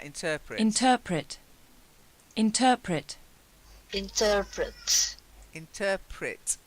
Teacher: the stress is slightly different it's on the second syllable inter and then Pritt interpret okay oh yeah baby needs feeding